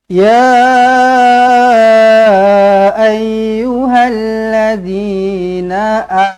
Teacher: kita kena baca panjang dengan panjang dengan harakatnya empat ataupun lima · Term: Mad Jaiz munfasil